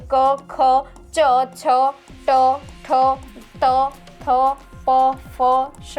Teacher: આપણા સ્વરતંત્રની અંદર કોઈ પણ વ્યંજન બોલતી વખતે કંપન થાય નહીં તો તેને કેવો વ્યંજન કહેવાય તો કે અઘોષ વ્યંજન કહેવાય